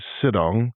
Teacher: So, many of you may have also noticed the inclusion and pronunciation of the word sidong, which, in addition to having an -ong song at the end, is not really a portmanteau or word formed by mashing two words together, but rather just a faster, more lyrical way of saying sit down